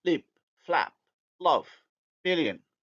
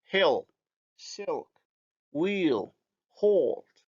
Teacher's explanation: the light is alveolar hence plus anterior and the dark Le is post alveolar or let's say palatal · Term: light L